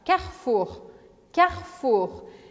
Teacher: Em francês, a gente come esse E, tá? E o R é arranhado. Então fica Carrefour, Carrefour. · Você não vai pronunciar o E no meio da palavra, porque ele não tem acento, não tem nada. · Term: E pelado